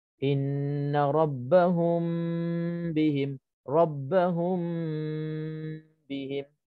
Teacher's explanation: Maksud ikhfa di sini kita masukkan kamil secara sempurna, seolah-olah kita tutup, bukan seolah-olah, mana kita tutup terus mim, bibir mulut kita rapatkan terus sebab mim mati di situ. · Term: ikhfa syafawi